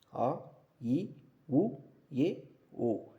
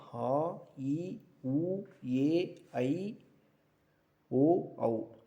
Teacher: குறில் எழுத்துக்கு தனி மாத்திரை அளவு இருக்கு நெடில் எழுத்துக்கு தனி மாத்திரை அளவு குறில் எழுத்துக்களை குறிக்கக்கூடிய மாத்திரை அளவு பார்த்தீங்கன்னா ஒரு மாத்திரையும் நெடில் எழுத்துக்களை இரண்டு மாத்திரை அளவும் குறிக்குது